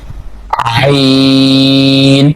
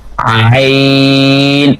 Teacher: So in this letter we are using our middle part of throat.